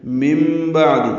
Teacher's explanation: من انفقا پڑھا تھا، ابھی انفقو پڑھ رہے ہیں، من بعد نون ساکن کے بعد با آنے کی وجہ سے اقلاب ہوا ہے، نون کی جگہ میم پڑھیں گے ، من بعد عین وسط حلق سے ادا کریں گے، یہاں